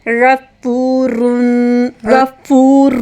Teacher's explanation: رین heavy sound میں اور نرمی سے آپ نے تھروٹ کے فرسٹ سے پڑھنا ہے، فا پیش کے ساتھ واو مد، اس کو بھی 2 حرکے کے برابر، اور را باری ہوگا، اور 2 پیش پڑھتے ہوئے آخر میں نون ساکن کی آواز آئے گی، غفور غفور، ٹھیک ہے۔ · اب ہے غفور، رین ہیوی ساؤنڈ میں اور نرمی سے آپ نے تھروٹ کے فرسٹ سے پڑھنا ہے، فا پیش کے ساتھ واو مد، اس کو بھی 2 حرکے کے برابر، اور را باری ہوگا، اور 2 پیش پڑھتے ہوئے آخر میں نون ساکن کی آواز آئے گی